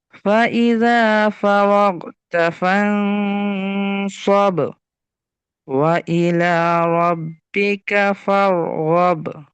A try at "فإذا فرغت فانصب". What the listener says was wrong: আচ্ছা, ফারাগতা, গয়নের আওয়াজটা একটু ধরে রাখতে হবে আর কি, মাখরাজে যাওয়ার সাথে সাথেই যেন আওয়াজটা বন্ধ হয়ে না যায়। রগ, ফাই, ফারাগতা ফানসব, এরকম আর কি।